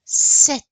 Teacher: we are pronouncing that T at the end.